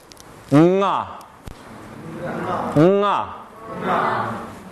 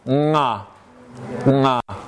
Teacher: It's just like ga, except it's nasal. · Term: engma